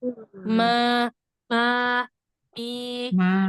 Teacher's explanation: Jadi mim itu tuh emang sifatnya al-khoisyum, masuk hidung.